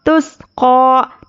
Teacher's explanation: تاسین پیش تس، قوف کھڑا زبر قا، تس قا. تس خلخلہ بالکل بھی نہیں ہونا ہے